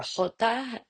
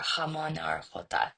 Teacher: It's the pronunciation of the Spanish J, and it's only it's in front of certain vowels, and you hear it more in Castilian Spanish. It's voiceless uvular, and it occurs at the middle or back of the soft palate. Um, and then a voiceless uvular fricative is common in some parts of Spain.